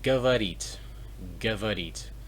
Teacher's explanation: the stress is on the e, so the o is pronounced as a